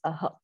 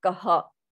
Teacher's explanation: its akara with the ER it is pronounced as aha so visarga is an aspirated sound it is the pushing out of breath